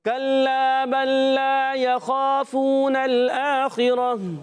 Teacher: گول تا کو وقف کی صورت میں ہا سے بدل دیں گے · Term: وقف بالابدال